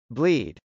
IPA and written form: blˈid (bleed)